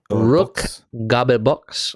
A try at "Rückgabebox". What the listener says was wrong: Yeah, you said Rückgebox. I'm pretty sure.